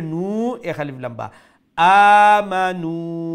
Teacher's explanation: যে সময় পড়ছিল নু শর্ট হয়ে গেছিল এখন আরবার ঠিক আছে এক আলিফ লম্বা মা আরবার শর্ট এরপরে নু এক আলিফ লম্বা